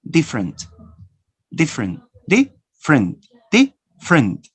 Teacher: You have 3 syllables, 3 vowels. Now you omit the vowel which is unstressed.